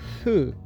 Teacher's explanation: no som ha, antes de u, vira hu, essa bilabial